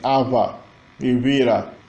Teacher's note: O tupi não tem V. Eles têm o B, a fricativa bilabial, V. Também Ava, Ibira.